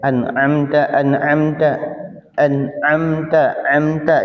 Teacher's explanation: Nah, ini kadang-kadang ketika huruf ain itu kita pakainya pakai hidung. Jadi dengungnya dengung hidung, bukan dengungnya karena di alhalqi. Padahal ain itu dia tempatnya di halqi ya. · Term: ngirung